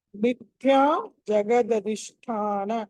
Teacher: థ అనేది ఒత్తి పలకాలి మహా ప్రాణం